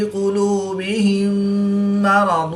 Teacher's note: میم ساکن کے بعد دوسری میم ہے تو یہاں پر ادغام شفوی ہوگا یعنی غنہ کر کے پڑھیں گے